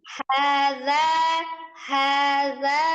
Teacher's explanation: kalau kita baca hadza kepanjangan itu dua harakat aja.